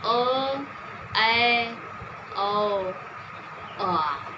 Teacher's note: जिन स्वरों के उच्चारण में आपके मुख का द्वार आधा खुलता है, उसको हम कहते हैं अर्ध विवृत